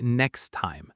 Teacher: native speakers often don't fully pronounce that final T sound